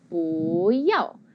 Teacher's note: we say 不要, which is 2nd tone, 4th tone. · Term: tone change